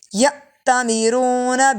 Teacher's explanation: یا میں حمزہ ساکن ہے، جھٹکا دے کے پڑھیں گے